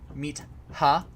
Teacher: So a word like meat, like that would ultimately be aspirated. That t would ultimately be aspirated.